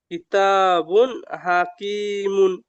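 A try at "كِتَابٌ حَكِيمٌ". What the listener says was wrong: জি, মাশাআল্লাহ।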